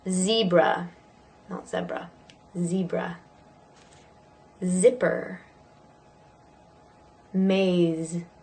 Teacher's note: same positioning as the S but for a Z or Zed you is voiced